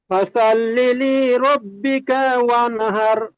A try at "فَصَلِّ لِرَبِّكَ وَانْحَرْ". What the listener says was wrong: এই দ্বিতীয় লামটি একটু টান মতো হয়ে গিয়েছে, টান হবে না, ফাসল লিলি।